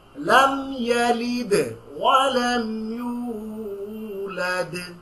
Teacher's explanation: just দুইটা দালের মধ্যে stress দিবেন, একটু কলকলা করবেন